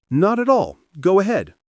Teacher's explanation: When the other person answers, Not at all. Go ahead, their tone usually drops gently